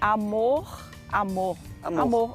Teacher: o Brasiliense tem uma forma mais amenizada de pronunciar o r